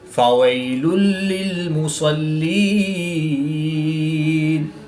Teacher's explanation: 2 پیش کی تنوین کے بعد لام حروف یرملون میں سے ہے تو یہاں پر ادغام بلا غنہ ہوگا، ان کے بغیر غنہ کے ادغام کر کے پڑھیں گے۔